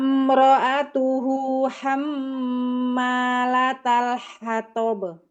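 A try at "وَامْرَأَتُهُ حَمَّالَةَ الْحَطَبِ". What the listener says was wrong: Ta-nya. La ta ta kurang hams. La ta ta.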